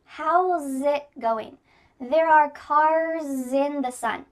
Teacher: In each of these words, the S becomes a Z. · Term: linking the s plus a vowel